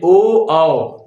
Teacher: यहाँ पे ओ कंठ का पूरा प्रयोग है किंतु होठों के साथ